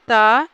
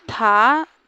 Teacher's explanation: त अल्पप्राण अघोष और थ यह भी दंत में आता है महाप्राण अघोष